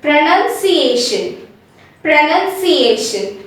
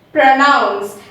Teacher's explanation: we don't round the lips when we say pro in pronounce as well as in pronunciation